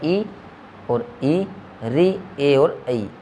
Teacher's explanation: हमारे जीभ के आगे के भाग से बोले जाने वाले स्वर है वो है ई और ई, री, ए और ऐ।